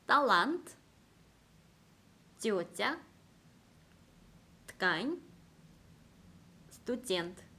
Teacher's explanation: 이 알파벳 떼는요, 알파벳 네와 매우 비슷해요. 뒤에 강모음이 있으면은 쌍디귿 발음과 비슷하고 연모음이 있을 때는 한글 쌍지읒 발음과 비슷합니다